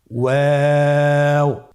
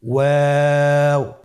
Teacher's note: 2 ঠোঁট গোল করে মাঝখানে ফাঁক রেখে হরফটি উচ্চারণ করতে হবে।